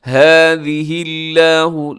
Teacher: لفظ اللہ باریک ہے کیونکہ اس سے پہلے ہا کے نیچے زیر ہے